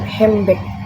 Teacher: The D sound between N and B is removed. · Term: consonant deletion